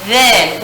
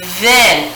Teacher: then has the buzzier sound